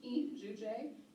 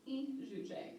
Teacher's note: e shujay is a nasalized I